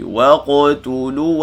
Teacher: wa nipis, qaf ni baca tebal, qalqalah sughra.